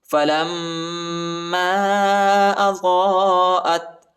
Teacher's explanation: میم کے اوپر جو ہے شد آیا ہے، اس پر غنہ کرنا ہے · فلما اضاءت حمزہ تھا زبر ات تا کو جھٹکا نہیں دینا ہے. ٹھیک ہے، تا ساکنہ ہے